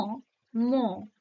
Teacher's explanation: ম ঠোঁট কাজ করছে, তাই এটা ওষ্ঠধ্বনি।